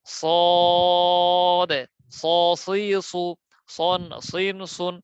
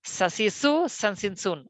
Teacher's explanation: যেমন সিন, ইংরেজি সি এর মতো, সিন সা সি সু সান সিন সুন। সদ হচ্ছে মোটা, তাহলে মোটা হরফ উচ্চারণের সময় মুখ উপর নিচ থাকবে